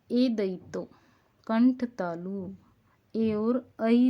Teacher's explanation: ए और ऐ जो है वो कंठ तालु से बोले जाते हैं